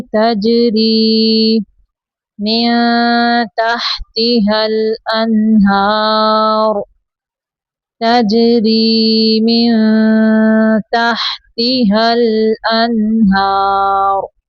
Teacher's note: تجری جیم کو کلکلا کریں گے